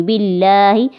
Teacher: لفظ اللہ سے پہلے اگر زیر آ جائے تو یہاں پہ لفظ اللہ کو باریک پڑھا جاتا ہے